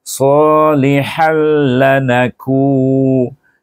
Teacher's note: Tanwin bertemu dengan huruf lam. Huruf lam adalah huruf idgham dan dibaca tanpa dengung.